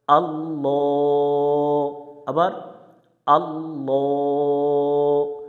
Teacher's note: আর লামের উপরে খাড়া জবর আছে, এখানে এগালিফ টান দিয়ে পড়তে হবে। যে কোনো অক্ষরের উপর খাড়া জবর, খারাজের উল্টা পেশ পাইলে এগালিফ টান দিয়ে পড়ব আমরা।